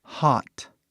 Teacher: Mesmo um A. Tipo um O bem aberto